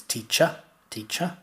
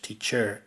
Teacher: they pronounce the r at the end of the word